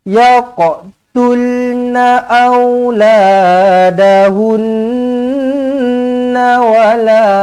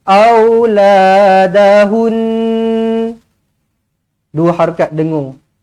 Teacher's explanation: Nun sabdu dengungkan dengan dua harakat mad wajibul gunnah.